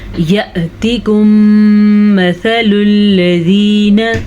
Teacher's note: میم ساکن کے بعد دوبارہ میم متحرک آ گیا تو دونوں میموں کو ہم آپس میں ملائیں گے اور غنے کے ساتھ پڑھیں گے. اسے کہتے ہیں ادغام شفوی.